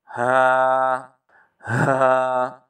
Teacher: حلق کے آخری حصے سے بھاری آواز کے ساتھ